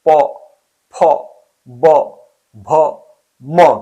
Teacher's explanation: और उसी प्रकार प वर्ग है, ये इसका स्पर्श ओष्ठ से होता है।